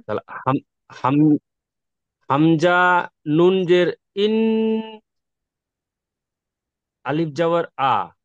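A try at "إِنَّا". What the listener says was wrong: নুন আলিফ জাবার না। এই সে, এমন গণ্যা করছেন কেন এখানে বলেন তো? ইন্না কেন গণ্যা করছেন? নুনের উপরে তাসদিদ এসেছে, তাসদিদ।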